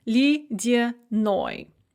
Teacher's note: For example, lydyanoi, icy. The stress is on the ending, and so both the ye and the ya in the middle are pronounced kind of like e